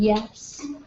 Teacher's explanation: the back of your tongue is up